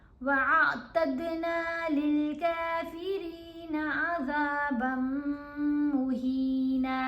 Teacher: یہاں ہم نے حمزہ کو عین سے ملا کر پڑھنا ہے، وَأَعْتَدْنَا نہیں پڑھنا، وَأَعْتَدْنَا دال کے اوپر کلکلا کرنا ہے